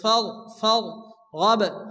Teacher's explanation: ربك فارغب এখানে র সেকেন্ডের ডান দিকে অক্ষরের উপরে জবর আসছে রকে পুরো করে মোটা করে উচ্চারণ করতে হবে